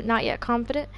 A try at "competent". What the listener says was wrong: competent. swear it sounds like you're saying confident. It's competent.